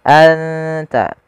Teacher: Cara membacanya adalah suara nunnya disamarkan ke huruf ta. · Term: ikhfa